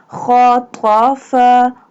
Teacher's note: Kha pronounced from the top part of the throat. Fa pronounced from the edge of the two top front teeth touching the inside part of the lower lip.